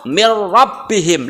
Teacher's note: Kemudian yang ro mil rabbihim, langsung ke huruf ro-nya, nunnya dihilangkan karena diidghamkan.